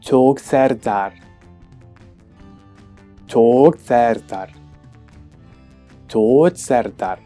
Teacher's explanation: the first sound is a consonant, the voiced palatal stop. Then we have a long vowel, according to this transcription, and the cluster t or ts, depending on the accent, I suppose.